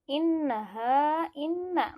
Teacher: inna masih ditekan 2 harakat. Hukumnya gunnah.